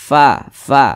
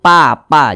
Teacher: huruf Fa itu ketika kita melafazkannya maka ada udara yang mengalir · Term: sifat hams